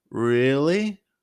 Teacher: holding really to emphasize disbelief